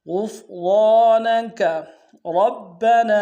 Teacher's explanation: را کو موٹا ادا کرتے ہوئے با کے سامنے لانا ہے، با کے اوپر تشدید زور دیں گے، با کے سالف مدہ ایک اندار میں کھینچیں گے.